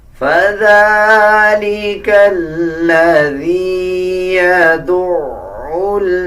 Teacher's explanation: اب اسی طرح ذال کے اوپر کھڑا زبر ہے. ذال کو 1 سیکنڈ لمبا کر کے پڑھا جائے گا